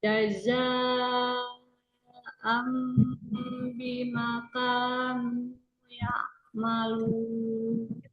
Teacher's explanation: Terus tanwin ketemu huruf ba, nun sukunnya berubah menjadi mim sukun, berarti iklab Ustazah.